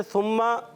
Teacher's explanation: सा की अदायगी क्लियर करनी है, सीन से नहीं बदलना। सुम्मा, कल्ला, उर्फ मद्दा, एक अलिफ खींचेंगे।